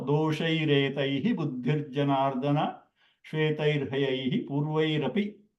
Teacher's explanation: Just the Visarga turned into the Repa.